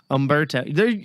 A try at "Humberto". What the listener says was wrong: I think you say the H in Humberto. And then you change your mind.